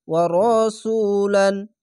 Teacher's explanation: পেশের পর অসাকিন এক আলিফ টেনে পড়বেন।